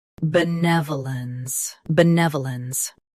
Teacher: Stress ne. Keep v soft and clear.